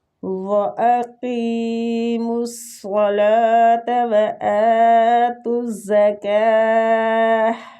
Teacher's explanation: وہ پہ ہونٹوں کو گول کریں گے